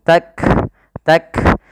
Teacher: Kaf memiliki sifat salah satunya sifat syiddah yaitu suara kita tertahan ak kemudian ada nafas yang dikeluarkan ketika melafalkannya yang di mana